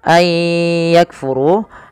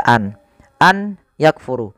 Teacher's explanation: artinya nunnya dianggap tidak ada langsung dibaca ke ya maka sambil dimasukkan kayak dan itu yang kita namakan dengan Idgham